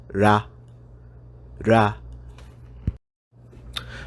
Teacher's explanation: The Japanese R sound is actually somewhere between an R and an L sound